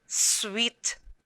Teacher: is when blended together they will have the initial consonant blend the two consonants are blended together but you can still hear the individual sounds of s and w